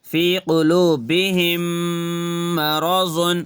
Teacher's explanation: میم ساکن کے بعد میم آیا تو میم کو میم سے ملا کے گنہ کے ساتھ پڑھنا ہے